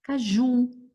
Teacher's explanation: Essa é um pouquinho difícil, mas a gente já viu algumas. Caju, não tem acento e é o ju mais forte. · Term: oxítonas